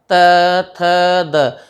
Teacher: हमारी जिह्वा हमारे दांत को स्पर्श कर रही है, इसलिए ये ध्वनियाँ क्या हो गई? दंत ध्वनियाँ हो गई।